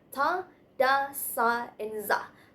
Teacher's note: Next is alveolar sounds like ta, da, sa, and za are produced by touching the tongue to the alveolar ridge, which is the hard area behind your upper front teeth